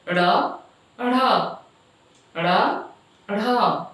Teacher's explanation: उच्छिष्ट क्या है, जीभ की नोक उलटकर अर्थात हमारे जीभ का जो आगे का भाग है उसको नोक बोला गया है। जीभ का नुकीला भाग को उलटकर कठोर तालू से टकराकर आगे की ओर फेंकी जाने से उच्छिष्ट ध्वनियां उत्पन्न होती हैं।